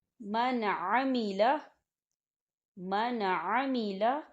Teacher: عین جو ہے یہ حروف ہلکی میں سے ہے، تو یہاں نون ساکن پر جو ہے نون ساکن کو صرف ہم ظاہر کریں گے، غنہ نہیں کریں گے